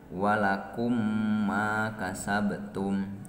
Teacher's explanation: Patokanana di mana-mana mim paeh mayunan mim deui maka macana tukeurkeun mim mahroj mim paeh kana mim anu hirup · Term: idgham mislen